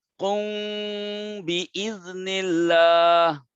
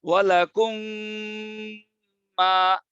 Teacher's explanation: মিমের পরে বা, যেহেতু দুজন একই মাখরাজের মধ্যে, মিমের পরে যদি বা থাকে তখন এই মিম আর মিমের মাখরাজে থাকে না, তখন বার মাখরাজে গিয়া নাকে চলে যায়। মিম বার মাখরাজের মধ্যে গিয়া নাকে চলে যায়।